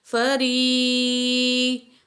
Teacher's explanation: را کے نیچے زیر ہے، باریک پڑھیں گے، را کو یا کے ساتھ جوائنٹ کریں گے۔ · یا مد ہے، 2 کاؤنٹ کھینچ کے پڑھیں گے یا مد کو